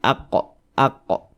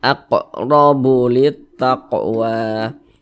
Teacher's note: samping huruf Qalqalah itu ada lima salah satunya adalah huruf qf kalau dia sukun maka cara membacanya dipantulkan ini huruf q dia sukun kita pantulkan AQ aqo begitu aqrobulitt